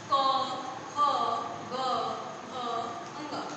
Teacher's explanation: जब हम बोल रहे हैं क, ख, ग, घ, अंग, तो आवाज कहाँ से आ रही है? गले से आ रही है, इसलिए इसे हम बोलेंगे कंठ